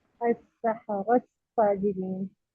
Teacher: सबसे पहले मुदगम को ड्रॉप कर दें, यानी ता ड्रॉप हो गया। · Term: इदगाम